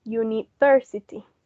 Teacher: the stress of that word, the primary stress, was on the third syllable